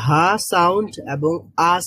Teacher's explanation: এখানে একেবারে হলকের শুরু থেকে, একেবারে হচ্ছে কণ্ঠনালীর শুরু থেকেই উচ্চারিত হয় হামজা এবং হা। মানে হা সাউন্ড এবং আ সাউন্ড, এই দুইটাই হচ্ছে একেবারে হলকের শুরু থেকে বা কণ্ঠনালীর শুরু থেকে উচ্চারিত হয়।